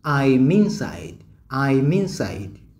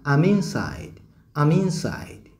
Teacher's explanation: Nikifanya vowel weakening katika I nitasema I'm inside.